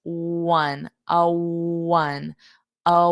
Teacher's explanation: It's the same pronunciation. So you hear that W a little bit of W which is the rounded lips.